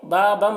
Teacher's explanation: بابم یہاں پر دیکھیے تنوین کے بعد میم ہے، حروف یومین میں سے، تنوین کو میم سے ملا کر غنہ کے ساتھ پڑھیں گے، اس کو ادغام ناقص کہتے ہیں